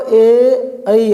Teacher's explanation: ए और ओई को बोलने में कंठ और तालु का दोनों का प्रयोग हो रहा है, क्योंकि ए और ऐ निकल तो रहे कंठ से ही, लेकिन हल्की सी जीभ भी टच हो रही है तालु पे। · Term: कंठ तालु